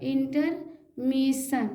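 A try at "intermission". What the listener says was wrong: मिशन, इंटरमिशन, चलिए सही, good, सही, अच्छा आपने बोला, बहुत बढ़िया।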